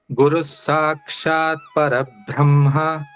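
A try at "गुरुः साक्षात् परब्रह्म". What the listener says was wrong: See, Guru Sakshat Parabrahma. Bhra is not a Mahaprana. Adu Alpa Pranadal helbeku. Guru Sakshat Parabrahma. Brahma.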